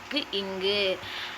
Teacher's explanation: முதல் நா வந்து மேல்வாயோட அடிப்பகுதியை பொருந்த கிடைக்கும் · முதல் நாவோட முதல் நா இருக்கு இல்லையா, அது மேல்வாயின் அடிப்பகுதியை பொருந்த பிறக்கும். முதல் நா மேல்வாயோட அடிப்பகுதியை பொருந்த கிடைக்கும் எழுத்துக்கள்